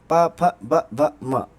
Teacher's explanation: प वर्ग, प, फ, ब, भ, म, ये ओठों का स्पर्श करते हैं